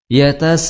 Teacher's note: Illa ashabal yamin fi jannatin yatasaalun, yatasaalun, itu mad ya, ketemu hamzah dihukumi sebagai mad wajib ya, mad wajib panjangnya 4 atau 5 harokat. Itu opsinya hanya 2 ya, hanya 2 pilihan di jalur Syatibiyah.